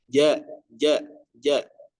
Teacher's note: jangan sampai kita mengeluarkan hams ya dalam huruf jim tersebut